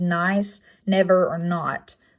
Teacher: sound next nasal consonant is the n making the n sound it is an alveolar placement it is voiced · It is an alveolar placement. It is voiced and showing up in words such as nice, never, or not, making that n sound.